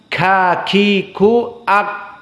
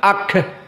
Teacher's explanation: dari sifat Kaf maka dia sifatnya juga hams